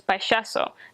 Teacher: All of the Y's and all of the L's, double L's in Castellano, they're pronounced with the sh sound instead of the ya, like you get in Spanish.